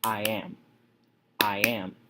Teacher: You have just listed an unstressed and then a stressed syllable.